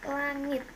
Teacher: Konsonan eng atau n, konsonan ng, kriterianya bunyi dorsovelar, nasal bersuara. Contoh kata langit.